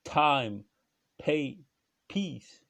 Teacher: la consonne initiale est aspirée, quoi. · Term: consonne aspirée